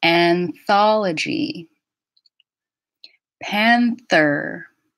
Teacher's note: I'm using my tongue blade for that N.